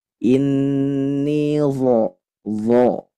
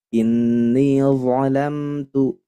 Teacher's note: Jadi tempelkan ke ulya tsanaya atau gigi seri atas. Dha dengan lidah yang diangkat bagian pangkalnya. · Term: huruf dha